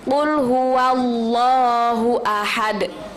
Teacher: Kalau fathah kita bacanya wa, bukan wo.